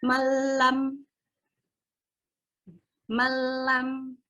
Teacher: Ya, dia tidak dengung. Malam dimasukkan tapi dengan tidak dengung. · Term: idgham bila gunnah